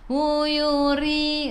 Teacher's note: ra pada bawah kena baca dengan nipis. Senyum ri 2 harakat ada ya mad asli.